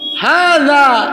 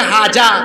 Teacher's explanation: উচ্চারণ তো জিহ্বার আগাকে দাঁতের আগায় লাগায় বলতে হয়